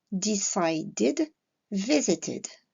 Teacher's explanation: Commençons par la prononciation id. Nous allons prononcer la terminaison ed, id, lorsque le radical du verbe se termine par le son de, comme le verbe decide, ou le son t, comme le verbe visit.